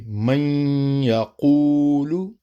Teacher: نون ساکن کو یا میں ضم کریں گے اور غنہ کے ساتھ کریں گے